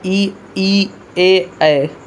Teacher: अग्र स्वर कौन होते हैं, जीभ के अग्र भाग से बोले जाते हैं, वो ई, ए, ऐ, ठीक।